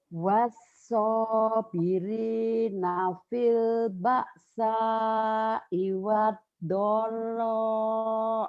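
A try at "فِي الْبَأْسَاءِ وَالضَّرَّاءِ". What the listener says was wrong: Iwad kurang nyamber. kurang nyamber. Fil ba'sa iwador kurang nyamber.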